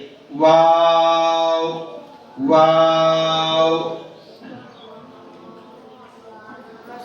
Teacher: वाव अदा करते वक्त दोनों होठ गोल होना चाहिए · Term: दोनों होठों की गोलाई